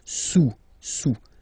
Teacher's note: Don't pronounce the final S, and then this OU combination of vowels is pronounced OU.